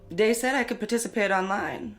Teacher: TH stopping, so that might be using something like a D sound for where you see a written TH.